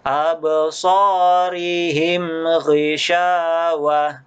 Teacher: jadi langsung tidak didengungkan izhar syafawi